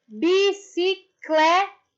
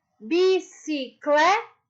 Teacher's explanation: se eu falo a palavra bicicleta, aonde que está a sílaba mais forte? Isso no clé.